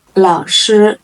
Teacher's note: And when you're pronouncing it, you don't have to emphasize it as other tones. 老 师 Lao is the third tone. Shi is a first tone.